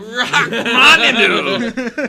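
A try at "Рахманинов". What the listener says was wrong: You need more of the phlegm.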